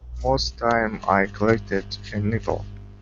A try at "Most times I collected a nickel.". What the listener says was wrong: Okay, make sure to put the S on the end of time. So most times I collected a nickel.